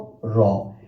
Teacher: র বর্ণটা উচ্চারণ করার সময় জিহ্বা কাপে। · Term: কম্পনজাত বর্ণ